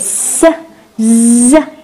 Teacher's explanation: Alveolars يعني tip of the tongue بلمسوا الالفيولر ridge اللي هي موجودة هون وراء الأسنان.